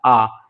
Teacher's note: ऐसे स्वर जिनका उच्चारण करते समय सबसे अधिक यानी सबसे ज्यादा मुंह खुलता है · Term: विब्रत स्वर